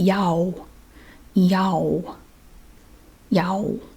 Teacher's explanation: You make that ah sound, and again, you don't change it. You just keep that ah sound and just make your lips into an O